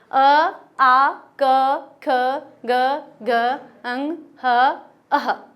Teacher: अकुह विसर्जनीयानाम कंठ, यह हमारा सूत्र है, यानी कि अ आ क वर्ग ह और विसर्ग उच्चारित करेंगे हम